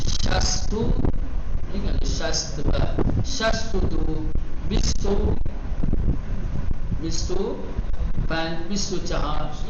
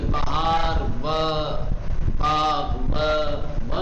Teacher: فارسی زبان میں خصوصاً عدد اور اشعار میں جب باب عاطفہ آتا ہے اسے و نہیں بلکہ پیش کی طرح سے پڑھا جاتا ہے